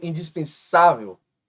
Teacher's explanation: penúltima mais forte, paroxítona